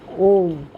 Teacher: The first letter A is the root sound, the key, pronounced without touching any part of the tongue or palate. M represents the last sound in the series, being produced by the closed lip, and the U rolls from the very root to the end of the sounding board of the mouth.